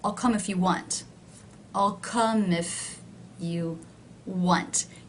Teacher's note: you can see that if is one of the words that is not stressed it is lower in Pitch